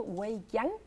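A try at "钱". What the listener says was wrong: Aunque en chino, la parte de Qian se debería pronunciar como Chang en vez de Qian.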